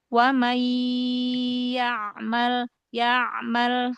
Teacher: Wa mai, huruf wawu di ujung bibir lagi, jangan wa mai, jangan dari dalam, tapi wa makhrajnya kan dari ujung bibir ya, dari bibir yang dikumpulkan ya. Wa may ya'mal, huruf ainnya coba alirkan lagi.